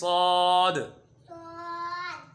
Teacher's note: ज़बान की नोक और दोनों दांतों की अंदरूनी किनारे से अदा होते हैं।